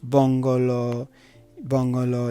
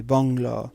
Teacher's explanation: you have to get rid of the inherent vowel all and make it so that instead of saying bongolo bongolo you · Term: conjunct form